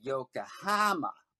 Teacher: So for example, the city of Yokohama, a lot of Americans will say they'll put the accent on the ha, and so the ko will become ka.